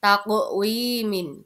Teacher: lagi pada lafaz takwiminin nah takqwimin ini ada huruf qof sukun ketika ada qof sukun maka cara membacanya harus dipantulkan karena itu merupakan bacaan Qalqalah